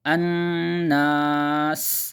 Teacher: الناس، نون پر تشدید ہے، غنہ کریں گے، ناک سے پڑھیں گے، الناس، اور سین کی آواز میں سیٹی نکالیں گے